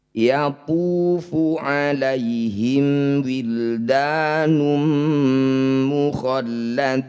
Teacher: Yatufu 'alaihim wildanum dhammah tanwin bertemu mim disebut bacaan idgham bi gunnah. Bunyi dhammah tanwin masukkan pada mim, dengungkan 2 harokat.